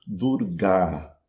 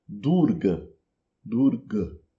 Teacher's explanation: um a curto e fechado, invés de durar, um a longo e aberto.